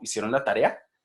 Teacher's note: Tiene una entonación ascendente al final